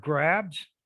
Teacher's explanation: the s is becoming similar to the b because it occurs after that sound so then the s becomes voiced like the b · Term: assimilation